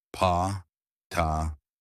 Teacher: at the beginning of words in English ptk are often aspirated a small puff of air